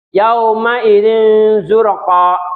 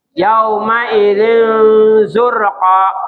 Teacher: pengucapan nun sukun atau tanwin yang dibaca samar-samar ya dan disertai dengung ya apabila bertemu dengan salah satu huruf dari 15 jadi ikhfa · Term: Ikfa Hakiki